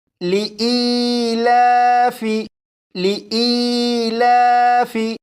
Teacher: اس لفظ میں آپ دیکھیں یہاں پر یا ساکن ہے، یا ساکن سے پہلے زیر ہے، لہٰذا یہ یا مدہ ہوا، اور یا مدہ کو 1 الف کے برابر کھینچ کر پڑھتے ہیں۔ یہاں پر لام کے اوپر کھڑا زبر ہے، اسے بھی 1 الف کے برابر کھینچ کر پڑھیں گے، جیسے لِإِيلَافِ، لِإِيلَافِ۔